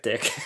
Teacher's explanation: there's a stop and then there's a little burst, right? The burst, suddenly all the air is coming out. It's not like S where there's a constraint. · our first stop consonant, where all the airflow is completely cut off. That's why I don't see anything here.